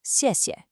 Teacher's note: The second syllable is what we call a neutral tone. That means it's unstressed, it's short, it's light, so it flows 谢谢.